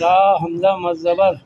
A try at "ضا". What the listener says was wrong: حمزہ نہیں ضاد الف را مد زبر